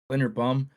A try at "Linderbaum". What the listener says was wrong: You said Lindenbaum, and then you said Lindenbaum.